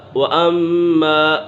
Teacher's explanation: وَأَمَّا مَن جَاءَكَ يَسْعَىٰ، وَأَمَّا میم مشدد ہے، میم مشدد میں ہمیشہ غنہ ہوتا ہے